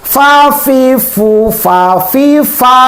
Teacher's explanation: Bibir bawah dengan gigi yang atas. Maka sehingga fa itu ada anginnya.